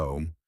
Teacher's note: Man slash N colon tongue tip on alveolar ridge. Nasal vibration